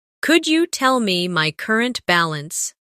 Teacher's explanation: Could you becomes could ya in faster conversation